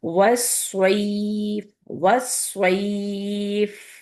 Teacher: اینڈ میں آپ کی ایر آنی چاہیے، کیونکہ فا کو آپ سکون کے ساتھ بول رہے ہیں